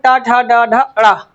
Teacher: और फिर है ट वर्ग, ट, ठ, ड, ढ, ण इनका उच्चारण स्थान मूर्धा है। ये मूर्धा से उच्चारित होते हैं।